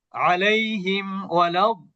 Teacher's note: ওয়াও আছে ওয়াও। যেহেতু এখানে বাও নাই মিমও নাই এইজন্য মিম সাকিনকে স্পষ্ট করতে হবে। কোন প্রকার গুণনা করা যাবে না। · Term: ইজহার